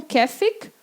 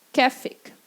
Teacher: esse A-Umlaut tem som de é